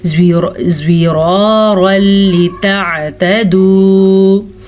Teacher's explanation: تنوین کے بعد لام آیا ہوا ہے تو ہم ان دونوں کو آپس میں ملا کے بغیر غنّے کے پڑھیں گے